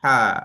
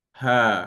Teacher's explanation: Kalau ha bulat, anginnya tu seiring dengan suara. Kalau ha pedas, angin dia keluar dulu baru diiringi suara.